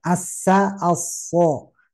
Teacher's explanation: Tinggal kalau so itu tebalkan pangkal lidah yang diangkat. Jadi bedanya tebal tipis. Ya, hanya saja menjadi tebal itu karena pangkal lidah diangkat.